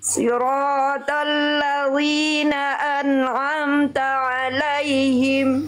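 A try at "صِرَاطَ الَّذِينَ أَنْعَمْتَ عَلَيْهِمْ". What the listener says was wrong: Sli, tebalkan lagi sedikit slotnya. Siratal ladzi, jangan li, jangan sampai kayak huruf v kasroh. Zi tipis, lidahnya rileks. Siratal ladzi, jangan li. Siratal ladzina an'amta alaihim.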